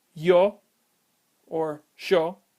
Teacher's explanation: you will most likely hear me pronounce my Ys as a sh sound, as that is part of how the Y is pronounced in Uruguay.